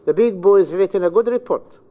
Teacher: So the stress, as you see, is bound to, we have here 3 chunks. Every chunk is stressed, and we have syllables equal in time intervals once pronouncing the sentence.